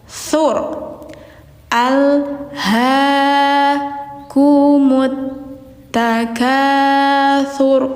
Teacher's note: Sur, ujung lidah bertemu ujung gigi atas.